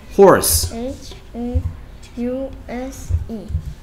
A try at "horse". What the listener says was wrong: 자, 이건 house인데요. 이건 집인데요. 자, 봐봐. 말 발음이 이렇게 나오고 있어. horse.